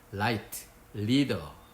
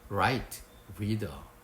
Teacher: L은 혀가 입천장에 닿고 R은 혀가 입천장에 닿지 않는 소리입니다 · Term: L과 R 발음